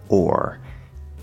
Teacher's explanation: O plus or. And they sort of blend into one sound, into one syllable. This is an R-colored O.